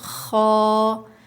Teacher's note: خو ادا ہوتا ہے حلق کے شروع سے جو منہ کی طرف ہے